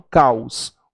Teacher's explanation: O O tem som de U, logo ele é uma semivogal.